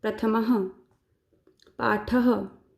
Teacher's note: जो ये दो बिंदु लगे हैं इनको हम कहते हैं संस्कृत में विसर्ग, और जब इनको बोलते हैं तो इनका उच्चारण होता है ह की तरह। जैसे ये क्या है, प्रथम, लेकिन साथ में विसर्ग लगा है तो इसको हम बोलेंगे प्रथमः पाठः।